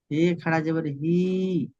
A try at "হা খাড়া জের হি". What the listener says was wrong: হি খাড়া জের নয়, হে নয়, হা, হা খাড়া জের হি। ভাই আমার হে নয়, হা পড়েন, হা।